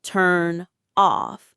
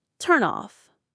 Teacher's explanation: We don't stop between the words. We push that consonant sound over to the next word. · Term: linking